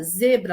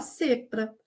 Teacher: Porque esse Z exige essa sonorização, exige essa vibração das cordas vocais.